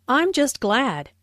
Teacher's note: Notice the stress on glad.